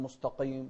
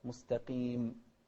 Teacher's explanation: وفي القاف مفخمة لكن أقل تفخيما من غيرها لأنها مكسورة، اهدنا الصراط المستقيم، ما نقول مستقيم، لا، مستقيم.